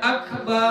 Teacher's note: atau dia memanjangkan fathatal ba, fathah pada huruf ba, min akbar, dari lafaz akbar. Ini dipanjangkannya. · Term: isba'